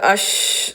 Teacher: കാറ്റും ശബ്ദവും വായില സ്പ്രെഡ് ആവുന്നുണ്ട് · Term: തഫഷി